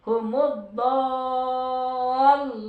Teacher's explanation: itu ada lam ditekan ya ada tasydid